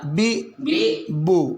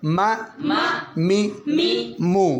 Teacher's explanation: اچھا میم اور با کی آواز یہ جب جزم والے ہوں تو پھر ان کی بعض نہیں پتہ چلتا با پڑی ہے یا با. بی بو، یہ دونوں ہونٹوں سے ادا ہوتے ہیں. ما می مو، کہتے ہیں نا ہونٹوں سے ہوں چار ادا.